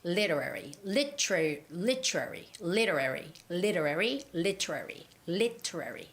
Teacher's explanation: Literary, literary, literary, literary, literary, literary, literary. And the stress for this word goes on to lit, L-I part, lit